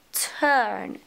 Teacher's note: لاحظي هنا لو كتبتيها in phonetic transcription راح تطلع لك turn. طيب خلينا الحين نشتغل على صوت التاء. هل هو voice؟ لا. هل أتى هنا glottal stop؟ أكيد لا. هل هو spread glottis؟ yes it is.